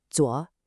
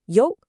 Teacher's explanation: Zuo, that dipping third tone, versus yo, that sharp falling fourth tone.